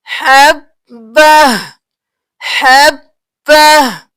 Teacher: تو ہم کیا پڑھیں گے حبہ حبہ. وقف کی صورت میں صرف ہا کی آواز آئے گی